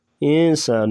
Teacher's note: یہاں پر اخفاء مع الغنہ کریں گے، یعنی ناک میں آواز چھپا کر غنہ کیا جائے گا۔